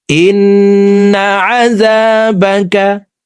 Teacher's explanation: ওয়াজিব গুন্নাহ 3 সেকেন্ড পরিমাণ গুন্নাহ করে পড়ব কারণ হরকতের বামে নুনের উপরে তাসদীদ আছে ইন্না আযাবাকা বিল কুফারি